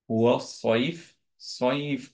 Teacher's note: সদ হচ্ছে heavy obviously, and হচ্ছে হামস আর রাখা